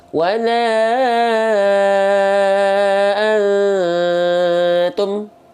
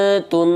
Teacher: Tapi karena mim sifatnya bukan syiddah, tapi mim sifatnya adalah tawasud sedikit mengalir, maka dilafalkan nggak boleh putus